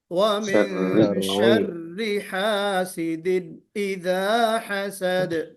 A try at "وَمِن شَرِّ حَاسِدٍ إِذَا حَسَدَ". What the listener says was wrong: ومن میں اخفا کرنا ہے. وَمِن شَرِّ حَاسِدٍ إِذَا حَسَدَ